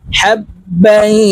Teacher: তানউইনের পরে ইকফার হরফ ফা আসছে, তো এই বাকে গুন্নার সহিত পড়ব। হাব্বাই, নাকের ভিতরে লুকাইয়া গুন্নার সহিত পড়তে হবে। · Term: ইকফা গুন্না